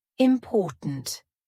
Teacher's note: at the end we have a stopped T sound important there's no t that we actually speak at the end